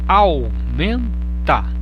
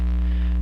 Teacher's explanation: Há um ditongo decrescente porque o A e o U estão juntos na mesma sílaba e você pronuncia a letra A mais forte, né, do que a letra U.